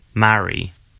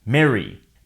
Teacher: An exception is a small of words in which the A is followed by a double R, in which case the vowel is pronounced as eh in the US.